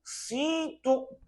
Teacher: Se eu não conseguir falar sinto, eu chego a uma conclusão que essa vogal é uma vogal nasal